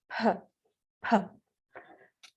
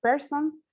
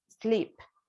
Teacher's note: P is voiceless, and is the manner of articulation stop. And the place of articulation is bilabial